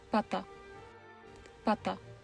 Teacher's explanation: Voiceless stops in Czech have very very small positive VOTs. Unlike in English, these voiceless stops are largely unaspirated. · voicing occurs after the release of the closure. While the VOT is a positive value, it is fairly small at 0.02 seconds. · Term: voiceless plosive p, voiceless plosive P